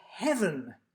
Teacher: we stress the first syllable because we squashed this into one syllable by sort of squashing